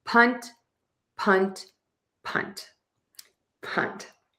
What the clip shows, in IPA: pʌnt